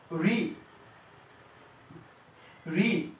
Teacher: এই বর্ণের উচ্চারণ স্থান হলো মূর্ধায় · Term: মূর্ধন্য বর্ণ